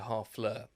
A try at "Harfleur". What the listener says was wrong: Harfleur. They don't pronounce the H. Harfleur. They don't pronounce the H in French.